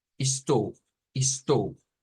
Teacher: en este caso los portugueses esto lo pronuncian como ish, estou, estou. No una S, sino una SH. Bueno, aquí diría yo, si nos quedamos con la pronunciación esta, no está mal, pero si yo quiero sonar más a Brasil, uso esto.